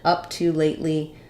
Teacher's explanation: we stress on the up of up to